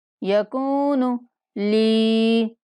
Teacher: انا یکون، کاف کو بھی ایک الف کے برابر لمبا کریں گے۔ یکون لی، لام کو بھی ایک الف کے برابر لمبا کرنا ہے